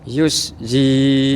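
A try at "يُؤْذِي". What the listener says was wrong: Nah, itu menjadi sin Pak. Nah emang beberapa kita akan kesulitan huruf za ini keluar anginnya, gitu kan. Jadinya kalau keluar anginnya jadi huruf sin.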